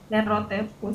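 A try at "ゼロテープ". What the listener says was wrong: Ada garis panjangnya di setelah T kan kalau nggak salah. Zero tepu.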